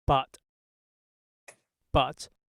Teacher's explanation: mandarin speaker's bud on the top and butt on the bottom the vowel length is exactly the same but what's different here is primarily the length of the burst so the duh has a very short burst and the the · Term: voicing contrast